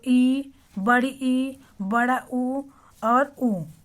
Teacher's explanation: समृत कहने का मतलब हमारा मुंह लगभग बंद होता है।